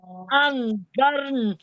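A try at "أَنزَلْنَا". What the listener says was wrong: यहाँ वक्फ नहीं होगा। नहीं होगा, अंजरना। अलिफ मद्दा है ना आखिर में, वक्फ नहीं होगा।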